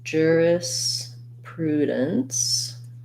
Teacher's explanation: main stress in this is on the pru syllable